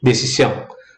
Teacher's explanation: Ele tem 3 sílabas e a sílaba tônica é a última. Decisão é a última. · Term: palavra aguda